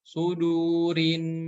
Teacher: Kemudian berikutnya ada nun yang bertasydid ya. Maka cara membaca huruf nun yang bertasydid itu harus didengungkan 2 harokat ya, dan ditahan 2 harokat.